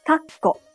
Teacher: It's a timing issue, so you should use claps to measure time. To achieve the necessary pause in Japanese, the speaker pauses for 1 clap in between the syllables.